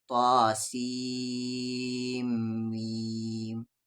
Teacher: بہت سارے لوگ اسے سین پڑھتے ہیں، سین نہیں پڑھنا ہے، سین کو کھینچ کر میم میں ملانا ہے کیونکہ میم پہ تشدید ہے